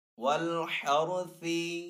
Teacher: रा साकिन पहले हा के ऊपर जबर है तो यहाँ पे रा साकिन को पुर पढ़ेंगे